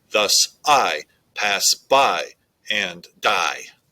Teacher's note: is one foot per line two syllables equal one foot and it's iambic so the second syllable is getting the stress